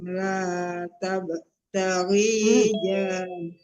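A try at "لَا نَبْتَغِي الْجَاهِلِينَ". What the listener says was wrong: La nab, bukan tak ya. La nab. La nabtaghil. Mati lam di depannya.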